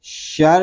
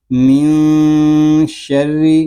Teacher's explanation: را مشدد ہے، اس کو ایک حرکت تک تکرار کریں گے، یعنی آواز کو جاری رکھیں گے۔